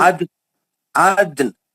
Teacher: नून का जेर नहीं पढ़ेंगे, नून को साकिन करके वक्फ करेंगे